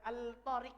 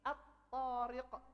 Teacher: Ya kan? A ketemu lam, ketemu huruf ta, digabungkan. Lamnya enggak dibaca. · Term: lam syamsiyah